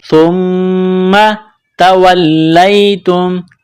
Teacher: میم مشدد ہے تو یہاں آواز ناک میں چھپائیں گے، غنہ کریں گے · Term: سا